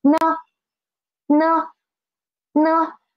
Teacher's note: it is a neutral tone which we should pronounce as soft and quick